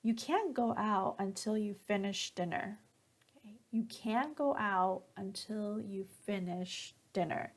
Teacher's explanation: so notice here at the end when I say dinner my pitch goes down